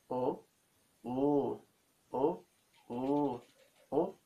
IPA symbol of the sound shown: o- o: